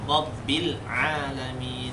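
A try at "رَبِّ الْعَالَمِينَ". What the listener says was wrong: Masih ada lo dikit.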